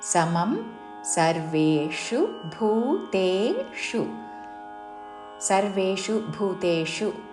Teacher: సర్వేషు భూతేషు 2 పదముల్లో చివరిలో మూర్ధన్య షు హ్రస్వము